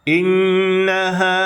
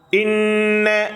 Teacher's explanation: இன்ன குன்னாவுடன் அழுத்தி சொல்ல வேண்டும்.